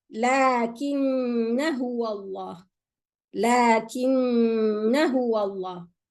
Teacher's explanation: I bring the ghunna of the noon and I continue to the ha. There is no madda.